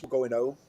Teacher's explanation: There's no R. Where I'm from, we don't pronounce H's